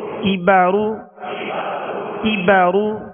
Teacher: کاف کو باریک پڑھنا ہے، یہ ڈنڈی والا کاف ہے، اور را کو پر پڑھنا ہے، را پر پیش ہے۔